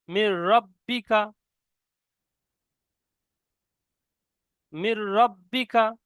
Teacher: দেখুন এখানে দেখুন, মিম র, এই নুনের উপরে সাকিন আছে কিন্তু নুনটা পড়া যাবে না, ডাইরেক্ট মিমটা রর সঙ্গে পড়তে হবে। কেন, এখানে সাকিন আছে তারপরে তাসদিদ এসছে, নুন সাকিনের পরে র এসে গেছে তাসদিদ, সেই জন্য ডাইরেক্ট রর সঙ্গে মিলিয়ে পড়তে হবে। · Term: ঈদগামে তাম